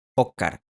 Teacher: En algunos dialectos del español, la /s/ también se pierde por completo al final de sílaba.